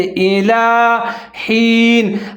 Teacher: لام کے اوپر کھڑا زبر ہے، ایک الف کے برابر لمبا پڑھیں گے ، جیسے الی حین، ہا ہے، ہا کے نیچے زیر ہے،